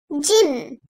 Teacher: Dil ortasının üst damağın ortasına kuvvetlice basılıp çekilmesiyle çıkarılır. İnce seslidir.